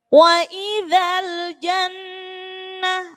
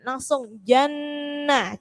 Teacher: nunnya ditasydid, berarti tidak ditekan, dengung. Jadi enggak perlu jenengan jannah. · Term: gunnah